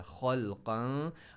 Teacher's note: زبان کو تھوڑا سا فاصلے پر رکھ کر ناک سے آواز نکالی, کیونکہ ہم یہاں پر اخفا کر رہے ہیں, غنہ کر رہے ہیں, تو اس لیے ہم نے یہاں پر اس کو سائلنٹ پڑھا.